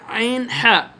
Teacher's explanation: কণ্ঠনালীর মধ্য ভাগ হতে আইন হা উচ্চারিত হয়